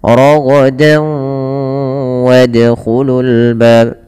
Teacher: kalau huruf setelahnya wau maka masukkan tanwinnya ke wau dan ditahan dan dibunyikan dengan huruf wau suara nunnya hilang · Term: idgam bhunah